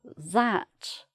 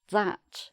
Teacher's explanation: the final t can be missed off, but also the ah sound is a little bit wider